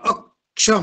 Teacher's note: त्या क चा भार त्या अ वरती आला आणि क चा भार अ वर पडल्यामुळे तो जो अ आहे तो त्या ठिकाणी दीर्घ होतो